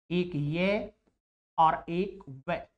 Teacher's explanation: ये और वे, ये 2 ऐसे व्यंजन वर्ण हैं जिनका उच्चारण स्वरों की तरह हो जाता है। स्वरों की तरह श्वास वायु को ज्यादा अंदर नहीं रुकना पड़ता। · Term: अर्ध स्वर